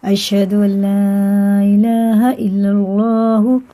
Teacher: یہ اس کو کہتے ہیں مد منفصل، مد متصل، یہ مد منفصل ہوتا ہے، یہ الف اس کے بعد الف آتا ہے تو یہ مد منفصل ہوتا ہے، 3 الف کے برابر سے ہمیں کھینچ کے پڑھنا ہے